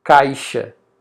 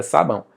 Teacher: Quando você fala o ão tapando o nariz, você sente o nariz vibrando. Então, nós temos um ditongo nasal.